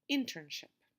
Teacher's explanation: this word also has three syllables the stress is on the first syllable